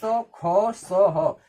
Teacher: जब इसको बोलते हैं तो हमारे मुंह से जो हवा निकलती है वो घर्षण के साथ निकलती है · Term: उष्म व्यंजन